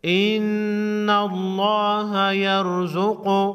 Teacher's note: لفظ اللہ کے لام کو موٹا پڑھیں گے